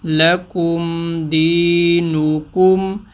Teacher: میم ساکن پہ غنہ نہیں کیا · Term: اظہار شفوی